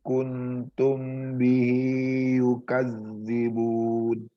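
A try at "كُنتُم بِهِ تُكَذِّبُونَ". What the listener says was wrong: Bukan yukad tapi tukadzibun.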